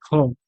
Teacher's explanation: ख अघोष महाप्राण वर्ण है